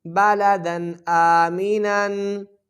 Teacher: با زبر با، لام زبر لا، بالا، دال دو زبر دن، بالا دن، حمزہ کھڑی زبر آ، میم زیر می، آمی، بالادن آمی، نون دو زبر نن، بالادن آمینن۔ تنوین کے بعد حمزہ ہے تو یہاں غنہ نہیں ہوگا، اظہار کریں گے، کھڑی زبر ہے، 2 سیکنڈ کھینچ کے پڑھیں گے۔